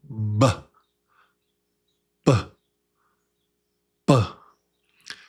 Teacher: The lips are together and then pop them open. You pop them open with your voice.